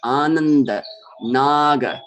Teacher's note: When we say na, as in the word naga, for example, or ananda, at that time, our tongue touches our teeth because this is the dental n sound. Dantya, n, ananda.